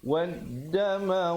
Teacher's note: Beza sahabat-sahabat lihat di situ, perkataan al maitata dengan ad-dam, ada hamzah wasal diikuti lam yang bertanda mati pada perkataan maitata, manakala pada perkataan dam itu, waddam itu lamnya tidak ada tanda mati. Lamnya tidak dibunyikan, terus dimasukkan ke dalam dal yang bersabdu. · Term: alif lam syamsiah